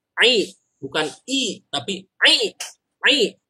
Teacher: Beda dengan a. Kalau a mulut dibuka, tapi kalau ain ini dari dalam tenggorokan dari bawah ke atas.